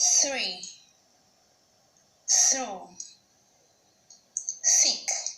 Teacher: for the first sound, it is called a voiceless dental fricative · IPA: θ